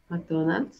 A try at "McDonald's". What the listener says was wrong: Mac. No hay una A, es la M-M-M-M-Mac. McDonald's.